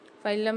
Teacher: نون کو سائلنٹ کر دیں گے اور الف کے ساتھ لام کو ملا کے پڑھیں گے